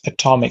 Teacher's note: The stress is on the 2nd syllable.